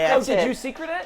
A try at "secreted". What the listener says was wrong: No, you put the emphasis on the wrong syllable.